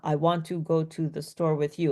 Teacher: it's a very flat, monotonous tone. Okay. So it's just, I want to go to the store with you. And every word is separated by like a space, almost, it's very robotic.